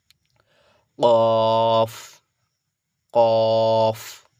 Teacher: ভিতর থেকে নলির ভিতর থেকে আসবে প্লাস মুখটা গোল হয়ে যাবে আওয়াজটা যেন গোল হয়ে বেরিয়ে আসে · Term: বড় কাফ